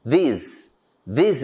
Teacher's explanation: it's a voiced dental fricative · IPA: / ðɪz /